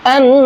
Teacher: نون کے اوپر تشدید ہے تو یہاں پر غنہ کریں گے